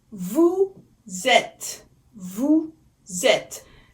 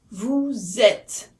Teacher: Now, vous êtes, again, there is a liaison, so you can hear it sounds like a one word, because et starts with a vowel and vous ends with a s, which sounds like z.